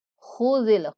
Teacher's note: خا کو پر پڑھیں گے اور زال کو نہایت نرمی کے ساتھ